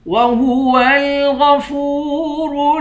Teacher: آخر میں حروف قلقلہ ہے، یہاں پر قلقلہ کریں گے · اعوذ باللہ من الشیطان الرجیم، بسم اللہ الرحمن الرحیم، وہو الغفور الودود، وہو غفور غین کو موٹا پڑھیں گے، فا کو واو کے ساتھ ملا کر واو کو ایک الف کے مقدار کھینچ کر پڑھیں گے، را کو واو کے ساتھ ملا کر را کو موٹا پڑھیں گے، دال کو واو کے ساتھ ملا کر واو کو ایک الف کے مقدار کھینچ کر پڑھیں گے۔